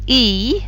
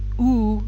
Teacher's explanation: with e your lips are very flat but with ooh they come much further forward